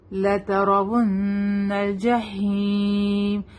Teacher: रॉ यहाँ पे heavy रहेगा क्योंकि रॉ के ऊपर क्या है जबर है। लतरावुन्नल जहीम, हा विल बी शार्प से लतरावुन्नल जहीम।